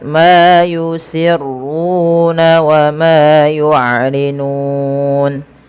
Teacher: Di sini kita boleh memanjangkan antara 2 harakat, 4 harakat atau 6 harakat karena dia ada bacaan mad arid disukun, yaitu mad yang terjadi di akhir bacaan kita disebabkan karena adanya sukun arid, teman-teman.